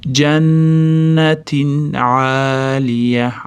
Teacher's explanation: Jannatinda nun tashdidli bo'lganligi uchun g'unni beramiz. T tagida tanvin kelyapti, ya'ni izhor qoidasi. Nunini aniq bildirib, keyin aynni aytamiz.